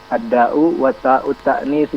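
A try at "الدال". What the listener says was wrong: Ad-dal, bukan ad-da'u ya. Kalau ad-da'u itu penyakit. Ad-dalu, ad-dal.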